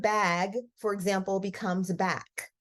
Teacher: um so let's talk about final consonant devoicing so we're substituting our child is substituting a voiceless final consonant